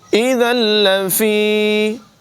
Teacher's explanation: لام حروف یرملون میں سے ہے، یہاں پر ادغام کریں گے، یعنی ذال کو لام کے ساتھ ملا دیں گے اور غنہ نہیں کریں گے